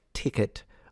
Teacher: you're used to aspirating your T's um when you pronounce like ticket